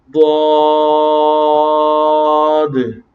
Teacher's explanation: ضاد جو ہے یہ زبان کی کروٹ اور اوپر کے دانتوں کی جڑ سے ادا ہوتا ہے